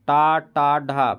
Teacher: ये मूर्धन मतलब मुड़ रहा है, जीभ मुड़ रहा है, मूर्धन्य ध्वनियाँ है।